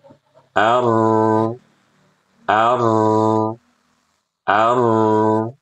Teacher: Huruf ro-nya, getarnya kita kurangi sedikit.